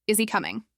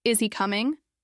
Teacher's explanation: Flat tone. No rise at the end. It doesn't sound like a question, it sounds uncertain or maybe even like a broken sentence. · with a rising tone, now it's a question.